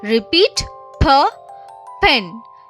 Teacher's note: Lips closed, quick air puff.